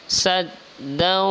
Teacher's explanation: Nah, ini juga berdengung teman-teman. Dau, yaitu baris 2 bertemu dengan waw, namanya adalah idgham bi gunnah, maka dibaca berdengung